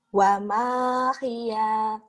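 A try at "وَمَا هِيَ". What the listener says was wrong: Ya-nya tapi pendek, yang panjangnya wamannya doang. Wa ma hiya.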